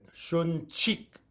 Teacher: see an apostrophe that's aspirated, shun chik, there's a ch, definite explosion of air on the ch, but not on the k because it is not aspirated.